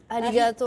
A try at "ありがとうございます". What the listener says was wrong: Alors en japonais, tu prononces jamais le R en fait.